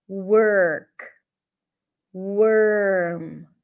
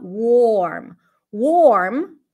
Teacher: to drop the O completely so it sounds like you skip the O that's the stir sound it sounds like you're going from the W to the r directly